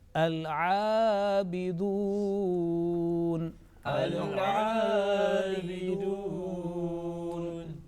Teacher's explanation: Lam is there, lam, but Laam Sakin. And in the second word al-abidun, Laam Sakin was clearly pronounced.